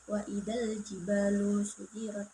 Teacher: Dan alif lam qamariyah yaitu alif lam bertemu dengan jim dibaca secara jelas